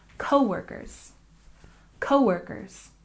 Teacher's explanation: Coworkers, we stress the first syllable.